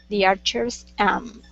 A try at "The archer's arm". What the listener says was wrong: R. Get that R in there. The archer's arm.